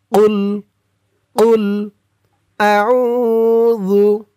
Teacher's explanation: কফের আওয়াজটা গলার ভিতর থেকে ধাক্কা খেয়ে বের হবে।